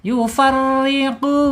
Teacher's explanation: qaf makhrajnya ada di pangkal lidah, yaitu pangkal lidahnya terangkat menyentuh langit-langit ya. Langit-langit yang ada anak lidahnya gitu ya.